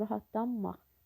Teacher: N samiti M samitinə çevrilir və iki m samiti olur